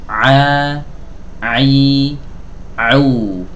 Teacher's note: tidak boleh melibatkan hidung saat kita mengucapkan huruf Ain ya jadi Ain itu keluarnya dari tenggorokan bagian tengah didorong katupnya